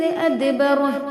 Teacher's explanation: ادبر میں دال پہ ساکن ہے، یعنی اس کو پڑھتے وقت اس کے مخرج ٹکر کھا کر الگ ہوں گے، آواز پلٹیں گے